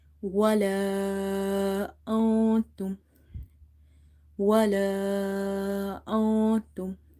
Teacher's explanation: I haven't read this noon clear. I have hidden the sound of the noon. This rule is called ikhfa.